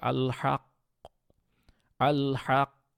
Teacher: আপনার ফাতহা দেওয়া যাবে না কিন্তু কলকলাও করতে হবে